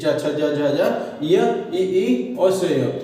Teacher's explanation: ये जीभ है ना ऊपर तालु पर छूते हैं तो वो तालव्य वर्ण कहलाते हैं